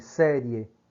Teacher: há uma passagem entre a semivogal rápida para terminar na vogal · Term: ditongo crescente